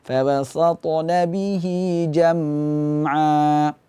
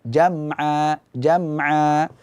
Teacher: Ini hukumnya adalah izhar syafawi. Jadi jangan dipanjangkan gunnahnya